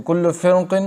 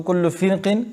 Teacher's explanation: लफ्ज़ कुल्लु फ़िरक़िन की रा में भी तफ़ख़ीम होगी, लेकिन चूँकि क़ाफ़ पर भी ज़ेर है इसलिए बाज़ कारियों के नज़दीक इसमें तरक़ीक़ है। बाज़ कारी कहते हैं कि इसमें तरक़ीक़ है और दोनों अमर जायज़ है।